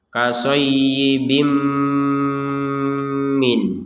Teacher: Bim ini 100% dengung. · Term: idgham bi gunnah